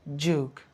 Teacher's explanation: some British people instead of that u sound they introduce a j sound